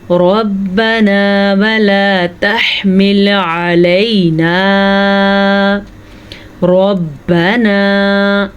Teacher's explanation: ربنا ولا تحمل علینا. ربنا، زبر کی وجہ سے را پر پڑی جائے گی